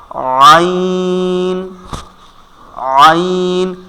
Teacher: উচ্চারণ হবে হা যেখান থেকে আইন ঠিক ওখান থেকে আইন আইন আমাদের কণ্ঠনালীর ঠিক মধ্যখান থেকে উচ্চারণ হবে